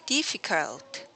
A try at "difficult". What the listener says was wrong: Can you make this, because the E was long here. So make it faster. It's not stressed anyway. The stress is here. That's going to help make your E sound shorter.